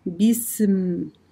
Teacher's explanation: когда мы прижимаем две губы, да, ну, легонько, чтобы произнести мим, и сопровождается этот звук вот этой гунной назализацией